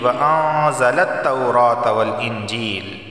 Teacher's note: نون ساکن کے بعد زا آیا ہے اور زا حروف اخفا میں سے اخفا والا غنہ ہوگا۔